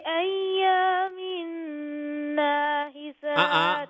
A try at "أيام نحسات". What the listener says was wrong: أيام نحسات don't make the noon long.